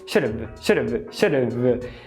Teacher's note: Você vê que você vai direto de um TEP para um V.